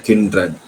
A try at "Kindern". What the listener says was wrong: This is no ren here. It is kindern. Yeah, it's not kinderen. So please do not insert any vowel which is non-existent. Do not insert any vowel or any sounds which are not there.